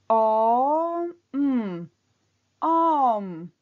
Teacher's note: Казват удължено о и веднага добавят звук м.